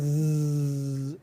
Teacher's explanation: you can sort of find the source of that buzzing. It's right there in your larynx. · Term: voicing